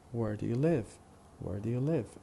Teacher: where do you live is a sentence with 4 syllables, and the stress pattern would be strong, weak, weak, strong.